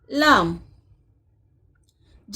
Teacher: जबान की नोक ऊपर के सख्त तालू से लगे जब लाम अदा होता है